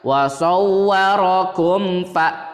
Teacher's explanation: Karena ini mim mati bertemu fa dan fa ini bukan huruf ba atau bukan huruf mim, berarti dinamakan idhar syafawi dan dibacanya jelas. Mimnya jelas, huruf setelah mimnya juga dibaca jelas. Nggak boleh ada dengung, nggak boleh ada bunyi eng pada kalimat ini. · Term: idhar safawi